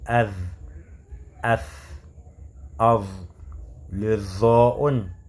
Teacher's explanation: Parce qu'on dit av, av, le zo'un. On place la langue est en contact avec les incisives supérieures, c'est-à-dire les dents qui sont en haut, mais en gonflant avec la bouche. On va dire que c'est une lettre du tafrim, le zo'un, c'est une lettre du tafrim.